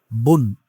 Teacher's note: বু এই উচ্চারণের সাথে আপনি বাংলাতে একটি দন্ত্য ন এড করে দেন। তাহলে বু আর দন্ত্য ন দুটো মেলায় উচ্চারণ হলো বুন। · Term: তানবিন